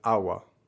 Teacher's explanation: In most cases, in most varieties of Spanish, you'll hear people say agua with a soft G, and in some varieties, you'll even hear people omit the G entirely. So it becomes something more like a W, as in agua.